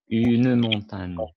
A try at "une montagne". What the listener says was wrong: Il faut prononcer le E.